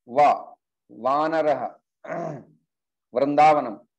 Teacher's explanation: तो वकार जो है दंतोष्ठ, अपर टीथ एंड लोअर लिप।